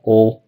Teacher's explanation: maybe you did kind of a O instead of a dark L